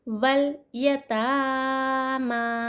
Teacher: एक अलिफ के बराबर खींचना चाहिए खड़ा ज़बर को